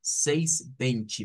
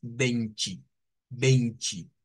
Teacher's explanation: siempre que vemos las tes con e en Brasil las convierten en ch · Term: sonido ch